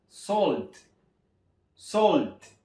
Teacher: no vaya a caer en la tentación de pronunciarlo con a porque no es Salt y recuerden hacer énfasis en la t